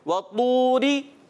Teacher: قرآن پاک کا سب سے موٹا حرف یہ طا ہے. اس کو ہم نے موٹا پڑھنا ہے. وطوری. اور را کو ہم نے باریک رکھنا ہے.